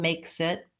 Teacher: I sort of link them, makes it. There's not a real clear break between those two. Makes it. What you might find challenging about that is doing the KS sound.